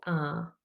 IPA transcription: a: